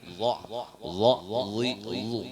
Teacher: Kalau za itu ujung ilat kada bakal keluar, tapi bakal dalam ke atas ke gigi.